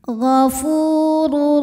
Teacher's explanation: Karena tanwin dhammah menghadapi huruf ro. Maka tanwinnya masuk ke ro, ghafurur tanpa dengungan. Jadi cukup ditekan. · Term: idgham bila gunnah